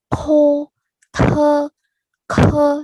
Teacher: Ada aspirasinya, ada anginnya yang keluar.